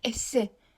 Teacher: Esse vurğu ikincinin üzərində olacaq.